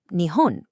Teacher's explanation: nihon for Japan goes low, high, low. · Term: pitch accent